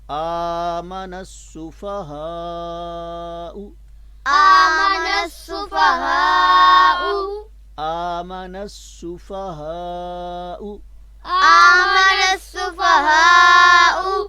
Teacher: یہاں بھی الف لام جو ہے وہ لکھنے میں آئے گا، پڑھنے میں نہیں آئے گا